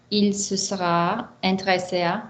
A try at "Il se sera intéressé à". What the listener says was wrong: Why are we stopping after ah? Don't stop, my girl. Stay on a vowel until you've got the next bit of intellectual data.